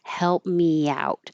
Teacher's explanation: there's an invisible y because you're going from me where the tongue is very high to out where the tongue is low. So, you slide it down and it makes a Y.